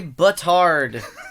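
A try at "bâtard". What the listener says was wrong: Butt hard. You don't even say the D.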